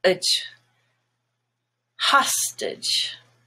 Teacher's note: the stress is on hostage, which then makes the A no longer gray, but just schwa